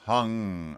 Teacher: now we're going to do an NG which is the back of the tongue like hung